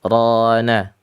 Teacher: Ra itu memiliki sifat yang tidak dimiliki huruf yang lainnya, yaitu takrir itu ya. Yang sifatnya itu bergetar, terulang, tapi tidak lebih dari 2 kali. Rana, ra-nya tafkhim karena sebab fathah ya.